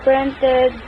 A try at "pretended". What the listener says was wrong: Pretend was mispronounced as printed.